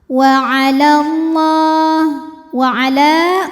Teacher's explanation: Alif bengkok atau alif maksurah. Alif didahului fathah panjang dua harakat. Tapi dibaca panjangnya hanya saat berhenti. Kalau wasal jadi gugur madnya ya jadi pendek. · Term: mad thobi'i